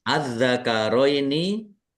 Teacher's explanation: Dibaca panjang enam harakat. · alif lam samsiyah karena tidak dibaca langsung masuk ke huruf berikutnya yaitu dal. Ditandai dalnya ada tasdidnya. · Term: mad farqi